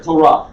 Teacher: As you read it in the word Torah, you can hear there is no vav sound to it.